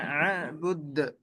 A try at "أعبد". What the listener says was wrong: أعبد أعبد أعبد হামজাটা শক্ত হবে আ আ